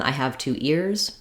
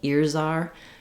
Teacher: you're going to hear that z sound more strongly as it links to the vowel